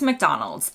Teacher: in the US it's always McDonald's emphasis on Mick